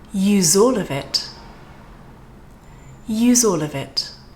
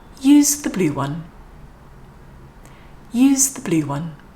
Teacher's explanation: the next word starts with a vowel sound then the z is going to naturally sort of get a stronger sort of vibration going on · the Z is going to naturally sort of get a stronger sort of vibration going on, because the vowel sound that comes next encourages it to be sort of louder and use more vibration